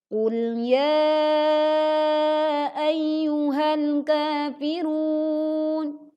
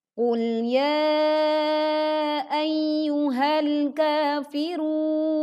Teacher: qul la ya ayyuhal kafirun Suara nun sukun tidak terdengar. Maka pastikan nun sukun tetap kita tunaikan haknya dengan bunyi dengung yang masih terdengar